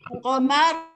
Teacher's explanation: Mensukunkan huruf ra itu dengan tafkhim. Teballah maknanya.